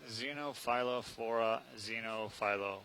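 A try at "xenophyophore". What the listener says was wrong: Right, no, there's no L, so it's xenophyo.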